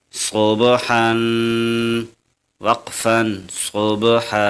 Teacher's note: اس لفظ میں با پر قلقلہ اور حا پر غنہ ہے